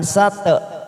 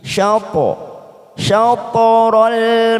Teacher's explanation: Qalqalah po kita pantulkan dengan bibir kita hampir membunyikan huruf aslinya. Jadi agak monyong bibir kita.